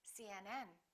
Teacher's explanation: then join them together cnn and then stress the last element